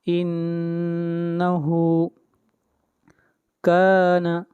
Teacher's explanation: نون مشدد ہے، اس لیے نون کے اوپر غنہ ہوگا، آواز ناک میں جائے گی